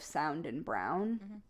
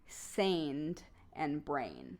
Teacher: And so the AR is often substituted for IRE, and AI is usually substituted for OU